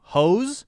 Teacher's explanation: has to be that long soft sound where your tongue is vibrating at the upper part of your mouth which is called your hard palate it has to really vibrate but not too hard so that